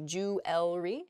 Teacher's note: the word kind of gets a little bit smushed together and we say jewelry instead. We miss that second E sound in there.